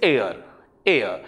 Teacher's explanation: h is silent we do not pronounce this particular h so it begins with a vowel sound